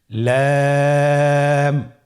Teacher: লাম হরফটি উচ্চারণের ক্ষেত্রে অবশ্যই বারিক হবে এবং তিন আলিফ টেনে পড়তে হবে